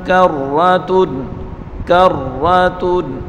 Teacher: را کو سختی کے ساتھ پڑھیں گے اور را کو پر پڑھیں گے